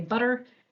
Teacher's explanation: most of us say butter and have this flap because we are American